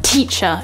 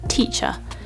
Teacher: it's not a very hard tea that you spit out it's like a sort of light tea